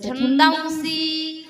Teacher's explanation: दा वरती अनुस्वार असल्यामुळे त्याचा थोडासा नाकात उच्चार करायचा